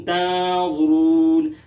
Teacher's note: तंज़ुरून नून साकिन के बाद वा है जो कि हुरूफ़ इख़फ़ा में से भी है, हुरूफ़ मुस्ताअदिया में से भी है, लिहाजा यहाँ इख़फ़ा भी होगा और वा को मोटा भी पढ़ेंगे। रून, रा को मोटा भी पढ़ेंगे, आखिर में मद्द आरिज़ वक्फ़ भी है, इसकी मक़दार 2 या 2.5 या 4 अलिफ के बक़दर है।